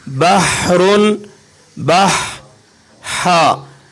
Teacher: آپ رگڑ کی بجائے اپنے حلق کے درمیان میں ٹھنڈک محسوس کریں گے اس ہا کو ادا کرتے وقت